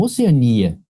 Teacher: Oceania não é ditongo. Oceania você pronunciou como hiato.